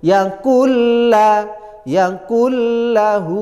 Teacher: tanpa dengung idgham itu artinya masuk bila tanpa gunah dengung Berarti masuk tanpa dengung tanpa ada tempo yang panjang sehingga langsung yaakulla yaaklahu begitu yang namanya huruf idgam bilaguna itu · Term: Idgham Bila gunah